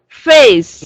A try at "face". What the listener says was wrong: There you go. Don't forget the ending sound.